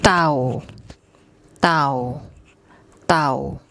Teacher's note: This is the unaspirated T sound.